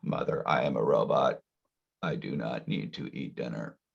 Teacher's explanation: Vocal fry is you're reducing the airflow, right? That's why it's quiet.